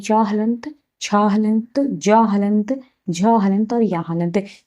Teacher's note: च वर्ग का जो उच्चारण स्थान है ये तालु है